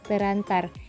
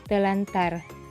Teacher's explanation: bunyi r dan r pada kata terantar diubah menjadi Bunyi l dan R sehingga menjadi telantar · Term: disimilasi